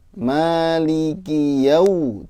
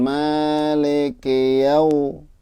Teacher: Jangan jadi o, ya. U-nya harus tetap U gitu. Ya, itu saja, tetap semangat ya, mumpung masih muda.